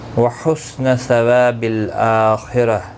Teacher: خا حرف مستعلیہ ہے، پر پڑھا جائے گا